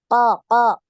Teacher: pangkal lidah di makhrajnya huruf q ini yang naik